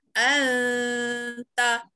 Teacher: nun mati bertemu dengan ta, ya. Jadi anta kita sembunyi dia, tidak sebut jelas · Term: Suara huruf tersembunyi